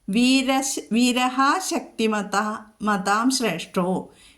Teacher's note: വീരഃ ശക്തിമതാം ശ്രേഷ്ഠോ, വീരഃ അത് കഴിഞ്ഞിട്ട് ശക്തി എന്ന് വന്നതുകൊണ്ട് വന്നതുകൊണ്ട് ആ വിസർഗസ്ഥാനത്ത് ഷ എന്ന് ചൊല്ലും, അല്ലെങ്കിൽ 2 ഷ കടുപ്പിച്ച് ചൊല്ലണം